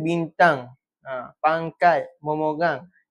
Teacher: bunyi nasal hujung ataupun tengah suku kata iaitu ng dibunyikan seperti nge